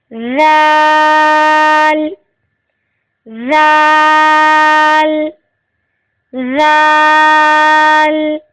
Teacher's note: رال زبان کی نوک سامنے کے اوپر والے دو دانتوں کے سرے سے لگنے سے ادا ہوگا۔ رال، رال، رال، رال نرمی سے ادا ہوگا۔